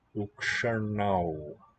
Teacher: And then, if there's a vowel following, so like dual nominative, ukshanau, it'll become a retroflex na, ukasha, or shanau will be nominative, accusative, dual. Due to the influence of the retroflex in ksha, in that cluster, the N assimilates. So that's perseveratory assimilation, looking leftward.